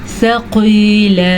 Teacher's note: क़ाफ को मोटा करके पढ़ना है क्योंकि क़ाफ हुरूफ़ मुस्तालिया में शामिल है। अगर आप इसको मोटा करके नहीं पढ़ेंगे तो ये बारीक काफ बन जाएगा तो इसका मीनिंग गलत हो जाएगा।